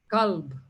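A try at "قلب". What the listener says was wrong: Qalb. for many people who cannot pronounce the qa, it sounds exactly the same. Kalb and qalb, which are completely different.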